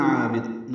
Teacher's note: الف مدہ ہے، 2 حلقات لمبا ہے، عین وسط حلق سے ادا کریں گے، با کو جلدی پڑھیں گے